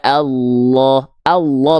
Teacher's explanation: ketika rnya fathah dia mesti dibaca dengan keadaan te tebal ingat huruf yang dia karakternya tebal ketika fathah itu tidak akan terdengar vokal A tapi akan condong seperti vokal O